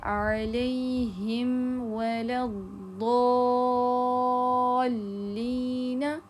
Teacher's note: اس کے مخرج سے صرف آپ نے اس کو ظاہر کرنا ہوتا ہے، خاص کر جب میم ساکنہ کے بعد واو اور فا آئے، کیونکہ ان دونوں کے مخرج میم کے قریب ہیں، تب آپ نے میم کو اچھے سے ظاہر کرنا ہوگا۔ ایسا نہ ہوگا کہ آپ نے جب میم ادا کر رہے ہیں تب بھی آپ نے واو کے لیے ہونٹ بھی گول کر لیا، تو آپ کا میم مکمل ادا نہیں ہوگا۔